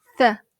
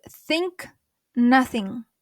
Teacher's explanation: Кәдімгі сақауланған кезде с деп айтатын болсақ, дәл солай тілімізді алдыға шығарып с дегенді айтамыз. С, бірақ тілді алдыға шығарып тіске тигіземіз.